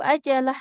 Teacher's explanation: jimnya nggak ditekan karena nggak bertasdid tidak ajalah tapi ajalah.